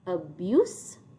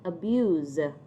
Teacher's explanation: abuse with an s sound and abuse with a z sound